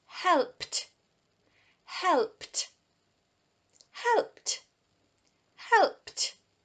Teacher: So because it ends in a p, if you add ed to a word ending in p, it makes a t sound.